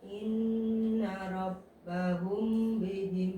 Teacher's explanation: Kalau mim ketemu ba rapat aja tapi jangan sampai jangan sampai ditekan banget. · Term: Ikhfa syafawi